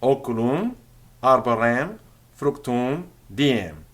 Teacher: They're all ending in that nasalized vowel. · That M on the end isn't actually pronounced clearly as an M. It rather was a sign that the final vowel of the word was heavily nasalized.